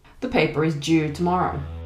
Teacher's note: if we're speaking casually or in some British accents, you might cut the D and say something like due.